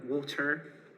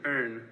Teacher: Ulster English is a rhotic variety, meaning that the R sound is pronounced in all positions, at the end of words, but also in between.